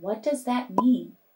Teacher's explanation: listen for the falling intonation in what does that mean? You can hear it when you say the word mean.